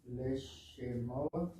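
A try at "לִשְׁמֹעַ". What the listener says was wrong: Leash. The one little dot is an E sound. It's not pronounced. It's a syllable marker. Lishmoa.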